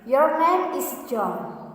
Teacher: beginning with a medium pitch and ending with a lower one, namely that's falling intonation.